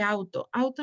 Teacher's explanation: primera sílaba si una vocal abierta más una vocal cerra auto se forma a partir de una vocal abierta más otra cerrada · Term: diptongo